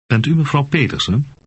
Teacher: note that the voice of the speaker goes up at the end to indicate a question